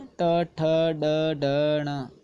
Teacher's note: इनको बोलते वक्त आपकी जीवा ऊपर जाती है, मुख के अंदर मूर्धन्य को टच करती है, इसलिए ये मूर्धन्य वर्ण है।